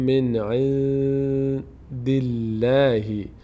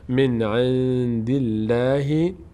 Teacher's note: لفظ جلاله ما قبلش کسره داره باری خوانده میشه